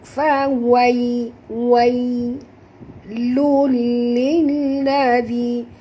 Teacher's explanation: Tanwin bertemu dengan lam, masuk tanpa dengung, idgham, ya, bila gunnah.